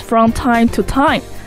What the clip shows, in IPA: frɑm taɪm tu taɪm